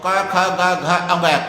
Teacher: कंठ से उच्चारण होता है, कंठ्य बोलते हैं इनको